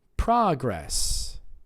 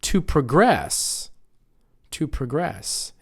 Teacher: Spelled the same way, stressing a different syllable, nouns on the first syllable, verbs on the second.